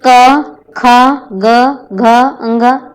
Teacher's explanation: कंठ व्यंजन, इनका उच्चारण कहाँ से होता है? जीभ के पिछले भाग के सहारे इन ध्वनियों को उत्पन्न करते हैं। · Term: कोमल तालव्य